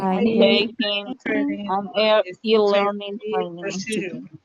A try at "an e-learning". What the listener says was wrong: It is not necessary to stop. Any learning, right? Like you are saying Annie, right? It is not necessary to say an e-learning. Don't stop.